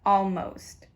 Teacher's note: The O here doesn't have the right sound. It should normally be aw, but it changes from aw to o.